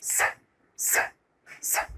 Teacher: So the letter is S, but the sound is S, S, S. And take care, it's a voiceless sound. قلنا إن الصوت ده ما ينفعش يطلعه باستخدام الأحبال الصوتية.